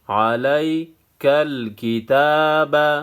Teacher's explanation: یا ساکن پہلے زبر ہے، یا لین ہے، اس کو نرم پڑھا جائے گا، کھڑا زبر ایک الف کے مقدار کھینچنا ہے۔